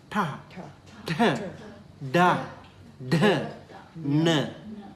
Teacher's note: tongue curling backward and tapping the upper palate